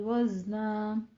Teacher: وزنا میں زائے میں سیٹی کی آواز آئے گی